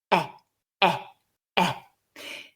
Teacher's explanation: a mid front vowel so we need to drop our Jaws a bit not fully to get some space in the mouth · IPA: /e/